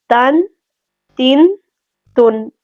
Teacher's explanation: ہم نون ساکن کی جو آواز ہے اس کو کھینچیں گے نہیں، مطلب ہم اس کو یوں نہیں پڑھیں گے تن، تن، تن، اس کو اس طرح سے نہیں پڑھنا، ٹھیک ہے۔